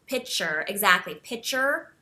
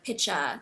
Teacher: pitcher with a hard R, that hard R, because in your language the sound is a softer sound, like with more of like a pitcha kind of ending. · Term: hard R sound